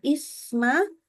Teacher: Antara is kepada ma maka suara bunyi sa-nya nyambung gitu loh. Isma, tidak boleh putus.